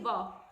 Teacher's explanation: ऊपर का जो हमारा दांत होता है वो होट को टच करता है